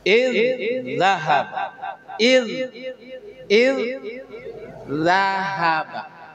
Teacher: Masukkan D yang pertama ke D yang kedua